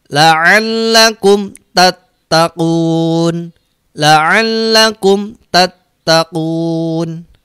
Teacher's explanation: Tidak boleh ditahan mimnya, tapi langsung lompat ke ta. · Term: mim sukun ketemu ta